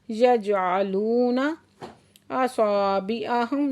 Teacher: सॉ पे अलिफ मद्दा है, 2 हरकत खींच के पढ़ेंगे। असाबिअहुम मीम साकिन है, इजहार शवी हो रहा है।